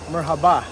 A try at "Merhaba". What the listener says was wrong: It's more on the r at merhaba. Don't say the h.